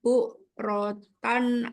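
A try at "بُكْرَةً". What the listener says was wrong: Bukan bu, bukan bu, tapi buk pakai kaf.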